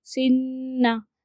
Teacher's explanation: دیکھیے سین نون زیر سن، نون زبر نا، سننا۔ آواز ناک تک لے کے جانا ہے اور ایک الف کے برابر گنہ کرنا ہے